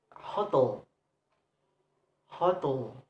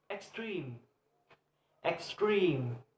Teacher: For noun, hotel, hotel. The stress is placed on the second syllable, and for adjectives, word extreme, extreme.